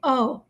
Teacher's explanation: پہلے الف کا زبر ادا کریں گے پھر واو اسے آگے سے ملا دیں گے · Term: لین